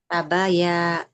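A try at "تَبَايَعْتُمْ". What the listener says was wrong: Ta-nya nggak boleh panjang. Dhammah tidak bertemu dengan huruf waw di situ.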